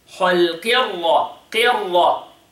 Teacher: The qaf is the lowest level of tafkhim. And then the ra is heavy.